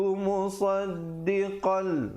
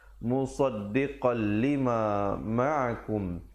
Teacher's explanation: di situ idgham bila gunnah, masuk tanpa dengung